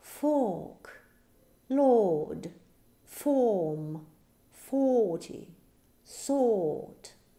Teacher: O-R мы читаем с долгим O